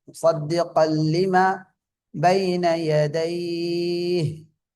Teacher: முசத்திகன் என்பதை முசத்திகல் என்று ஓதணும். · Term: இத்காம் தாம் பிலா குன்னா